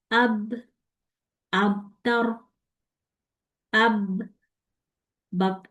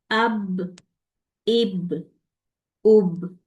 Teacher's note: साकिन में आवाज मेरी बाउंस बैक भी होगी और कलकला भी होगा